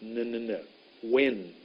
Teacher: n I'll show you how to make that n when will my tongue went behind my top teeth